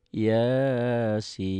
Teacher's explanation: Sin ini kayak alis, panjangnya itu 5 harokat atau 2 alif setengah.